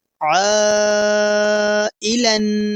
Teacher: تو ہم حروف مدہ کو 4 الف کے برابر کھینچ کر پڑھیں گے